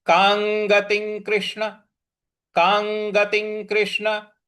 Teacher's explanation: तो कांगतिं गतिं। ती के ऊपर जो अनुस्वार है उसके आगे फिर क है तो क ख ग घ अंग वाला ही उच्चारण हम यहाँ पे भी ले आएंगे। तो हो जाएगा कांगतिं कृष्ण कांगतिं कृष्ण गच्छति गच्छति।